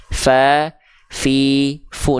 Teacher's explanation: Nah, ini huruf fa dilafalkan seperti ini. Ujung gigi sari atas kita disentuhkan dengan bibir bawah bagian dalam yang basahnya, bukan bibir bawah luar